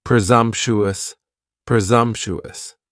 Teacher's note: four syllables and the stress is on that second syllable and the S almost sounds a little more like a z